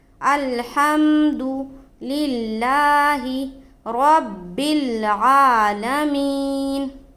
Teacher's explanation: عین کے اوپر کھڑا زبر ہے، اس کو تھوڑا کھینچیں گے ایک الف کے برابر · را کے اوپر زبر ہے، را کو پر پڑھیں گے، منہ بھر کر پڑھیں گے